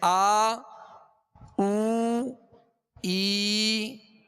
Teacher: الٹا پیش جب پڑھیں گے تو ایک الف کی مقدار کھینچیں گے، مگر ہونٹوں کو کامل گول رکھیں گے